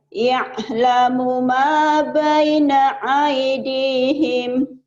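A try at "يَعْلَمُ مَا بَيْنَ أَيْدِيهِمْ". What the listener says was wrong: Iyanya biasa aja. Ya'lamu ya kayak keselak. Ya'lamu ma baina aydihim.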